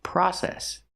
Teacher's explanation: Use the short ah like hot and stop.